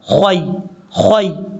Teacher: خا کو یا سے ملانا ہے، یہ یا لین ہے یا مدہ نہیں ہے. جب یا لین ہو تو شارٹ کٹ پڑھا جاتا ہے، لمبا نہیں کیا جاتا